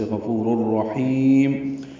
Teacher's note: ہا وسط حلق سے ادا کریں گے ، لمبا کریں گے، اور میم ساکن پہ اظہار شفوی ہوگا۔ · اللہ غفور الرحیم، غین پر پڑیں گے، فو و مدہ ہے، را کا را سے ادغام ہوگا ، تنوین کے بعد را آنے کی وجہ سے غفور الرحیم،